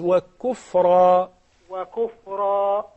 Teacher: Make sure the kaf is much softer than the qaf.